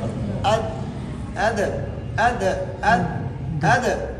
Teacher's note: پہلے زبان جب دال کے مخرج میں لگتی ہے تو اس وقت سختی سے لگتی ہے. دوبارہ جب اٹھتی ہے نا تو وہ قلقلہ ادا ہوتا ہے.